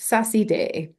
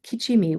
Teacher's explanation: it takes t and ch and turns them to s intervocalically. And this is uh especial- This actually occurs only in front of um a high front vowel. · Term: lenition